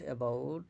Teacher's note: in the word about, the first A is a schwa sound